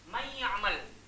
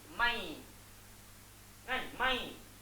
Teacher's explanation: nun ni dah masuk dalam ya, dia akan jadi mai. Kan? Mai. Tapi dengungnya masih ada. Maksudnya dia masuk tapi tak sempurna. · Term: idgham naqis